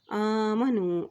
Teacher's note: याद है कि हमज़ा के ऊपर खड़ी ज़बर है तो इसको एक करके लंबा अदा करेंगे।